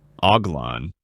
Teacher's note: In France, the word hoglin is pronounced uglan with a soft h and nasal ending. Hoglon, giving it a smooth flowing sound. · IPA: /ɔɡ.lɛ̃/